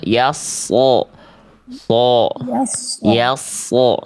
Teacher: Tebalkan sod, diangkat lagi pangkal lidahnya sodnya Bunda.